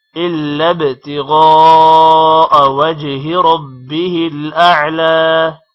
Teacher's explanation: با پر قلقلہ ہوگا، غین موٹا ہوگا اور الف پر مد ہے، اس وجہ سے تھوڑا لمبا کریں گے غا کو